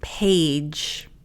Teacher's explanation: Notice a schwa and the D is a j.